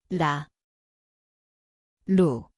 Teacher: Dit klink soos rul die plek is die tongpunt lig te tik.